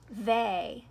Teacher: It's long, isn't it? And it's long because it's at the end of this syllable. Anytime you have a vowel at the end of the syllable, it's going to say its name.